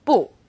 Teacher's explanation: When used on its own, 不 is fourth tone, 不. When 不 is used before another fourth tone, it becomes second tone, 不 谢 or 不 用 谢.